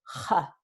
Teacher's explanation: Y en el norte y centro de España tenemos, en lugar de una consonante fricativa sorda velar, es fricativa sorda uvular. So, the uvula, la úvula está más abajo en la garganta.